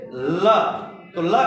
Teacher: उच्चारण करते समय स्वास जीभ के दोनों बगल से बाहर निकलता है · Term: पार्श्विक